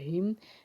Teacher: बारीक पढ़ेंगे क्योंकि इसके नीचे जेर है हा मीम जर हीम हा को हलक के निचले हिस्से से अदा करेंगे